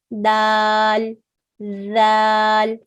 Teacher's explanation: For dal, the tip of the tongue touches the upper incisors. So if these are your upper incisors, the tip of the tongue touches this area.